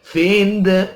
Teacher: dal mati itu dibaca pantul dipantulkan